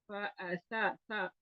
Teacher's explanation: सा के लिए जुबान जो है ऊपर वाले दांतों के किनारों को नरमी से लगानी है। इस तरह लगानी है कि थोड़ी सी जुबान दांतों से बाहर भी आ जाए, और दबा के नहीं लगानी, सीटी की आवाज ना पैदा हो, बहुत नरमी से लगानी है और जुबान बाहर भी आए।